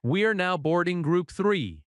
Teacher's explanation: Notice how now and boarding connect slightly, now boarding.